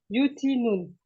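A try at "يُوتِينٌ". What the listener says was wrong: C'est ça, Ahsanti. Barakallahu fik.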